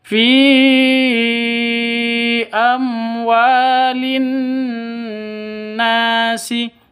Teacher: Nun tasydidnya ini gunnah. Ya, gunnah. Jadi kalau gunnah didengungkan 2 ketukan atau 2 harokat. Nasi, panjang 2 harokat atau 2 ketukan karena alif diawali dengan fathah.